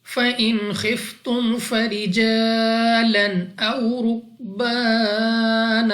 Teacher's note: अलिफ से पहले जबर अलिफ मद्दा 2 सेकंड तक लंबा किया जाएगा · नून साकिन के बाद खौ हरूफे हलकी में से है, इजहार का कायदा है, यहाँ पर हम गुन्ना नहीं करेंगे। और उसके बाद खौ हमारे पास मुस्तालिया में से है तो खा को हमने मोटा पढ़ना होगा।